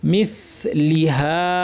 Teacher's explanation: সা বলার সময় তরাফুল লিসান অর্থাৎ জিহ্বার শীর্ষ থেকে ভিতরের অংশ উপরের দাঁতের শীর্ষে সুন্দর করে লাগাবেন। মিসলিহা, হা এক আলিফ টেনে আমাদেরকে থামতে হবে।